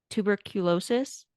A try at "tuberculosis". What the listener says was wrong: Tuberculosis. You're over enunciating. Tuberculosis.